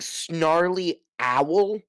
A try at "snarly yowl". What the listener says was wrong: Snarly yowl. Yowl with a Y. Put a Y in front of owl.